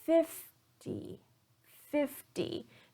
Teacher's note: so in 50 I'm stressing the first syllable